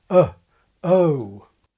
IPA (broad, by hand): əʊ